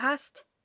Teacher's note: although there is a single s after the a in hast, it is pronounced sharp, as if there were two s, or sharp s